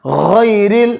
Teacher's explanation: جیسے غیر المغضوب نہیں پڑھنا, غیر المغضوب نہیں پڑھنا. غا کو موٹا بھی پڑھنا ہے اور گلے کے شروع سے بھی نکالنا ہے